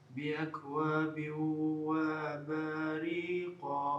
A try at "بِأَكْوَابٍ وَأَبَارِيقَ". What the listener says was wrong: не тяни. بأكواب وأباريق. короткая. با длинная.